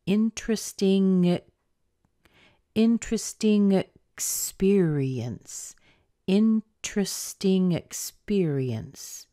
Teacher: we have a vowel after interesting, so make sure to push the sound over into the schwa sound after it.